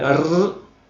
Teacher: el sonido de fonema r es vibrante hago vibrar la lengua en este caso de forma múltiple